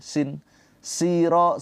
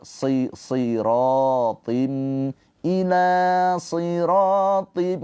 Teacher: Ketika kasroh dia tetap tebal. Kalau nggak tebal nanti berubah menjadi huruf sin kayak gini. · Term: huruf tebal